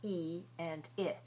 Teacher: These two English sounds e and I are both high front vowels.